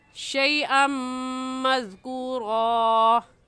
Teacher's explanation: शैअन की तनवीन पर हम गुन्ना करेंगे और गुन्ने के साथ इदगाम भी करेंगे क्योंकि तनवीन के बाद हरूफ यरमलून जो कि 6 हैं, या रा मीम लाम वाव नून, यरमलून उनमें से मीम आ गया है।